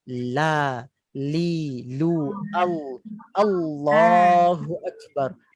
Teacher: lam itu diletakkan, hujung permukaan lidah tu diletakkan pada langit atas.